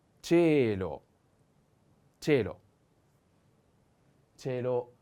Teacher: Cielo, the accent is on the e.